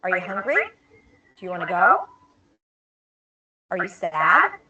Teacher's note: and what they mean so first let's talk about the patterns there is rising intonation where your pitch goes up Pitch is the tone of voice the frequency of your voice so it goes up · So we start low and we go up.